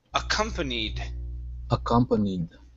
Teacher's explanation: So our stress is right in the middle